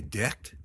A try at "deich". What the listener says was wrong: Deich. That's very close. The first D is slender. It almost sounds like a J. So j. And then yech.